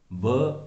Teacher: ब ओष्ठ्य भी है क्योंकि इसका उच्चारण करते समय दोनों होठ मिलते हैं, और घोष भी है और अल्पप्राण भी है